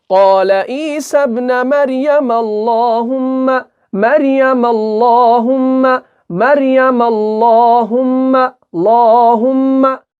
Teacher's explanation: ला पुर पढ़ेंगे, मुंह भरकर पढ़ेंगे, बारीक नहीं पढ़ना है बल्कि पुर पढ़ना है